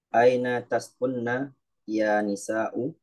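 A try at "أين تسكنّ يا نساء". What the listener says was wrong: Betul.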